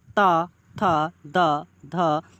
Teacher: आप जब इनका उच्चारण करोगे तो जीभ दांत को टच करेगी, यानी आप मूर्धा को देखोगे और फिर इसके बाद दांत को देखोगे तो ता, था, दा, धा, तो आप अगर इसका उच्चारण करते हैं इन वर्णों का तो आप पाओगे कि ये दांतों को टच करेंगे। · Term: दंत वर्ण